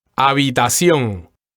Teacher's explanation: the first thing that comes to mind here is that the H is silent · the accent sounds like the accent is on the last syllable